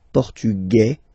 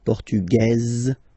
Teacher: Masculine, Portugais, you don't pronounce the S. Feminine form, Portugaise, you pronounce this Z sound